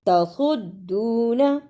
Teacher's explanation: تصدون اسے تصدون نہیں پڑھنا، صاد کو موٹا پڑھنا ہے. صاد کی جگہ پہ سین کی آواز نہیں آنی چاہیے